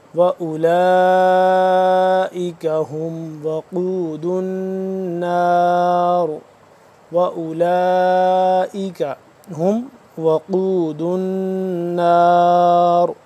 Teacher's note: قاف کو موٹا پڑھنا ہے، اور دال کے بعد دال مل رہا ہے آگے نون کے ساتھ، نون مشدد ہے، اس پہ ہم اخفا کریں گے، غنہ کریں گے، اور آخر میں را کو پور کر کے پڑھیں گے